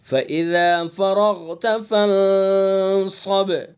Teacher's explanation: اور با کے اندر قلقلہ کریں گے